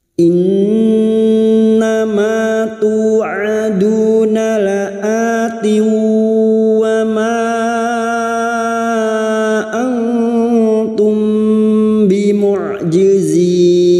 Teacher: Nun yang bertasdid gunna musyaddada kita dengungkan selama 3 harokat.